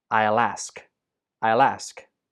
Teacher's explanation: In this sentence, I will gets contracted to become I'll. The L sound at the end of will links to ask, and ask gets stressed.